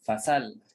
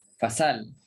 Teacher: Ya, fasal makna di sini nampak seolah-olah berlaku naqal, bukan berlaku ibdal, berlaku naqal. Pindahkan baris hamzah bagi kepada sin dan hamzah itu dihadzaf.